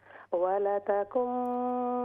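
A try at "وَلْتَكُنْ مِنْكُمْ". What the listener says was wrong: आपने ज़बर पढ़ा, वलतकुम, वलतकुम।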